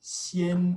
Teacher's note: when this low vowel ah is between an e and an n then it's going to raise a little bit to an e the epsilon sound sien we also see nasal influence in anticipation of the n